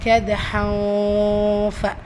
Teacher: ஸோ இஹ்ஃபாவுடைய சட்டம் அந்த தன்வீனில் இருக்கிற நூனை பாதியாக மறைச்சி குன்னா செஞ்சு ஓதணும்